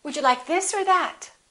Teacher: Or becomes just a consonant